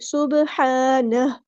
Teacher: سبحانہ نہیں پڑھنا، سبحانہ. ہا کو ہم ساکن کر دیں گے وقف کرتے ہوئے